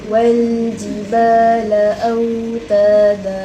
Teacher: اللام ممكن أن نطولها لأنها بصفة الرخوة.